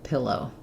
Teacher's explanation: IPA for pillow, we're going to have the O there. So clear vowel on the end, but shorter because it still has first syllable stress